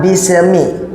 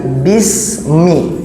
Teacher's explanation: Jangan sampai dia menyeret. Jangan bisemi tapi bismi.